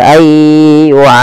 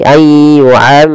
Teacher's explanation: Kemudian pada lafal ra di sini wajib ditebalkan, jangan dibaca ayyu'ammar tapi ayyu'ammaru, tebal ra-nya karena dia ra tafkhim